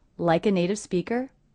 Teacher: In the entire sentence, I don't hear any gaps or pauses between words